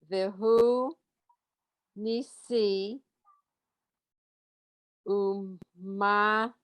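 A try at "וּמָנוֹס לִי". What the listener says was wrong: It's umanos. Right, it's not a mem. You're confusing with the final mem.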